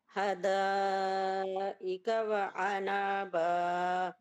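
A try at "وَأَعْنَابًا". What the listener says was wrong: بھی عین نکل ہی نہیں رہی. آ تو پڑھ رہی ہیں، بعد میں نون پڑھ رہی ہیں. انابا نہیں، غلط. اعنابا اعوذ والا عین نکال لیں. پہلے حمزہ ہے پھر عین. عین یہ والی آواز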